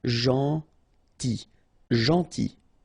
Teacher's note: this final L is not pronounced